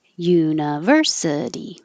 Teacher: U is secondary stress. It'll get a little longer but not higher